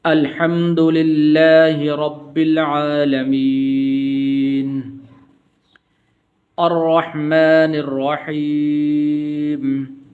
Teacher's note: را ہے اور را کے اوپر زبر ہے، تو اس کو پر کر کے پڑھیں گے